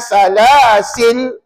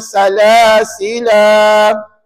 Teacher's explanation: perkataan salasila tadi dibaca dengan 2 harakat. Namanya mad asli. Mad asli. 2 harakat.